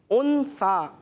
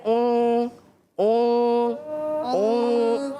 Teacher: تو یہاں پہ ہوگا اخفا. اخفا کا مطلب یہ ہے کہ آپ نے نون ساکن کی آواز کو ناک میں چھپانی ہے. ان سا ان نہیں پڑھنا بلکہ اون اون اون یہ کرنا ہے.